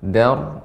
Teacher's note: tidak dor, tapi da dulu, danya tipis, baru masuk ra yang dibaca dengan tebal